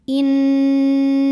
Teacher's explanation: ada Mim kun menghadapi huruf halqi atau huruf tenggorokan yaitu Hamzah maka mim sukun dibaca dengan jelas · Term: izhar halqi